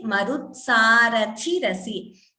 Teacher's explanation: This Thi, Mahaprana should be heard clearly.